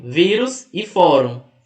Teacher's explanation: Percebam que vírus, a mais forte é o vi, que é a penúltima. E fórum, mais forte é o for, que também é a penúltima.